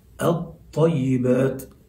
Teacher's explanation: ما فيش ذكر للام هنا كما كنا نذكرها واضحة مظهرة في الأمثلة الأولى عندما كانت مظهرة في اللام القمرية. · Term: الإدغام